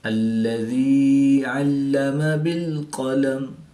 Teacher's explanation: یا ساکن سے پہلے زیر ہے تو یا مدہ ایک الف یعنی 2 حرکات کے برابر کھینچ کر پڑھیں گے